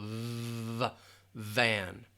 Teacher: The teeth are going to touch the bottom lip, and you're just going to have it vibrate a little.